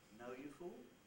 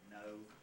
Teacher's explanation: We're at a midish level, and we stay there. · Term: mid-level